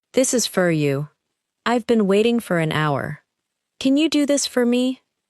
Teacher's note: In each sentence, for is likely to be short and unstressed. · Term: weak word